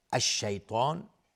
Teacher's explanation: الشیطان الف لام شمسی است و تا از حروف استعلاء غلیظ تلفظ میشه و الف هم تابع تا غلیظ